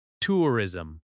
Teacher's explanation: Make sure the first syllable is clear and strong.